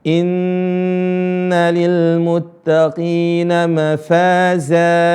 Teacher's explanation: ada Nun tasydid ini ditahan dua harakat